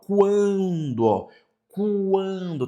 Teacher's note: Então aqui nós temos uma semivogal mais uma vogal. O U e o A é nasal? Sim, por conta do N.